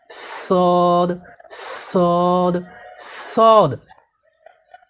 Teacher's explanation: সদ হরফকে জিহ্বার আগা সামনের নিচে 2 দাঁতের গোড়ার সঙ্গে লাগিয়ে শীষ সহ মোটা করে পড়তে হয়